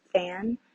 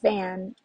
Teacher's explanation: your fingers on your throat and you say the word fan you can feel that the F sound is voiceless and you don't feel vibration in your throat and then for the word van it is voiced · and then for the word van it is voiced so you when you say the V sound you can feel your throat vibrates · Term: voicing, voiced and voiceless cognates